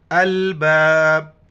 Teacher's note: آخر میں کلکلہ کرنا ہے، جھٹکا دینا ہے